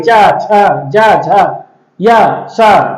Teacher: जिह्वा जो है तालु में टकरा रही है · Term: तालव्य ध्वनि